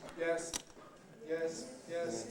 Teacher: doesn't go up doesn't go down stays on the same pitch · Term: mid-level tone